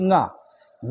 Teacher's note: ङा का कंठ तो उच्चारण स्थान होता ही है, लेकिन नासिका भी होता है